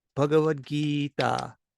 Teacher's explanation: So like, for example, in the word Gita from Bhagavad Gita, it's E, like A, B, C, D, E, that letter's name, E, Bhagavad Gita. You hold the E to Bhagavad Gita. But those other letters, Bhagavad, are fast.